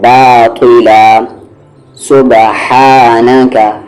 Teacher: اس ہا کا مخرج یعنی ایگزٹ مڈل تھروٹ